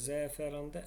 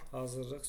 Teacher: zəfəranda ə uzanır, hökumət sözündə u uzanır, amma hazırlıq sözündə uzanma yoxdur